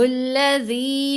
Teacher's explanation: لام کے اوپر کھڑا زبر ہے، 2 حرکات کی مقدار لمبا کریں گے